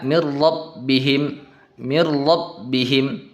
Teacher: mirrabbihim dimasukkan tetapi tidak didengungkan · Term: idgham bila gunnah